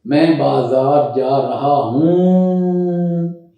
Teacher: یہ جو ہوں نون غننے کی آواز ہے، ایسی آواز آپ نے بنانی ہے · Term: نون غنہ